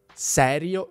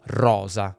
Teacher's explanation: La S in italiano ha due valori: /s/ e /z/ (“serio” e “roza”).